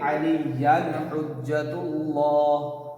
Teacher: اظہار, اس لیے کہ تنوین کے بعد حا حرف حلقیہ ہے نا